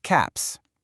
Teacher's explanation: It's actually three different sounds, and it all depends on what comes right before it. If a word ends with a voiceless sound, like the P and cap, that's just air. It makes a sharp S sound